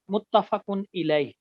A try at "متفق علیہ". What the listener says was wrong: متفق علیہ، الیہ نہیں ہوتا، علیہ۔